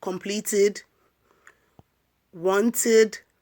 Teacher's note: So ed should be pronounced as id when it comes after sound t.